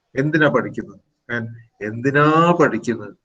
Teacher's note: So a rising tone changes the entire meaning of the sentence.